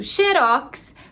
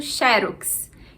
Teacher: sem acento xerox a gente tem a última sílaba tônica seria uma oxítona